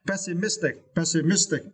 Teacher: And for this word, you need to stress the third syllable, miss, right? Pessimistic